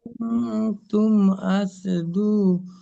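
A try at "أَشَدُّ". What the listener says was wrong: দালের উপরে তাসদীদ।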